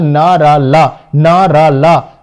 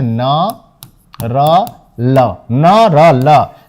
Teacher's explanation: जिह्वा की नोक दंत पंक्तियों के ऊपरी भाग का स्पर्श करती हैं। वत्स्य ध्वनियां न र ल, न र ल।